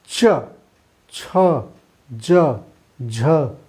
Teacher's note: ये जीभा हमारी तालु को लंबे समय तक टच की रहती है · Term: स्पर्श संघर्षी व्यंजन